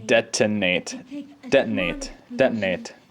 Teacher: not much use there i guess when most people say detonate they say it without like an aspirated t and they just kind of say it with a glottal stop